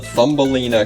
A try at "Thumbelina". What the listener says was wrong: It's Thumbelina, no TH.